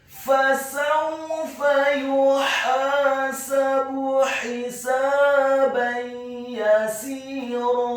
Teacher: Fasawfa, huruf fa-nya dibaca fathah 1 harokat, huruf sin-nya dibaca fathah 1 harokat, huruf wawunya dibaca sukun dengan posisi mulut kita agak tertutup dan dengan gerakan yang agak cepat. Kemudian huruf fa yang kedua dibaca fathah, 1 harokat saja.